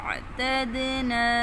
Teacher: آئین کو گلے کے درمیان سے ادا کریں گے